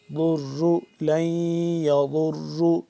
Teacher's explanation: ساتھ جب ٹچ کریں گے ضاد اپنے مخرج سے ادا ہوگا، ضاد کو موٹا کر کے پڑھیں گے، اسی طرح جب ضاد را کے ساتھ مل رہا ہے را کو بھی موٹا کر کے پر کر کے پڑھیں گے · ضاد کا جو مخرج ہے زبان کی بائیں کروٹ اوپر والے داڑھ کے ساتھ جب ٹچ کریں گے ضاد اپنے مخرج سے ادا ہوگا، ضاد کو موٹا کر کے پڑھیں گے